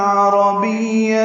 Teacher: لوگ قرآن پڑھتے ہیں را کی زبر کے ساتھ، یہ غلط ہے، قرآن نہیں ہے، قرآن ہے، تنوین کے بعد عین آنے کی وجہ سے اظہار ہے۔ عربیہ میں عین وسط حلق سے ادا ہوگا